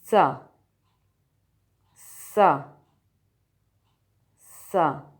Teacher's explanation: اپنی زبان کی نوک سامنے والے نیچے کے دانتوں کے کناروں سے لگائیں، اور پھر ہوا کو باہر نکالتے ہوئے سین کی آواز کی ادائیگی کریں، جیسے سا، سا، سا۔